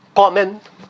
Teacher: a sílaba tônica tá no comen